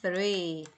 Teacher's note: 자, 점이 있으면 꼬리가 길게 발음하라고 그랬죠. th는 혀가 앞으로 살짝 나온다고 했어요. 쌍디귿이나 쌍시옷 발음이 난다 이렇게 이해해 주시면 돼요.